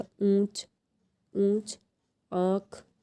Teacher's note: आपके मुंह और नाक दोनों से ही साउंड आ रहा है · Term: नेशनलाइज्ड साउंड